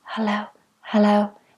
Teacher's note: I relax everything when I whisper I just don't have closed vocal cords and I send air through